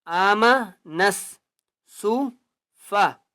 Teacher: آم نون سین زبر نس، نون کو سین کے ساتھ ملائیں گے، الف اور لام کو نہیں پڑھنا